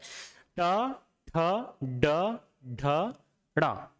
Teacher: मूर्धा मतलब जीभ का निचला हिस्सा। जीभ के निचले हिस्से को जब हम ऊपर तालु में लगाते हैं तो मूर्धा होता है।